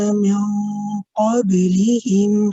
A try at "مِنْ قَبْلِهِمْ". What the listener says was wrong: مِنْ قَبْلِهِمْ. It sounds like when you're touching the makhraj of the qaf, you are going there, but it's a very light touch. So you say min, and what min, press so that none of the sound can come through your mouth.